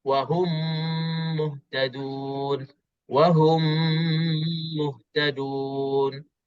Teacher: Terus mim mati, terus masuk dalam mim. Idgham. Idgham ni kita masukkan terus. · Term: idgham mitlain saghir